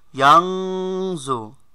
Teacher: নুন সাকিনের পরে জ আসলে এক ফার গুন্না হয়, অনিষ্কারের ন্যায় পড়তে হয়